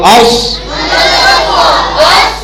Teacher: صاد کو موٹا پڑھنا ہے. حمزہ زبر صاد اس.